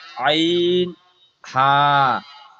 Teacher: কণ্ঠনালীর মধ্যখান থেকে উচ্চারিত হয় আইন হা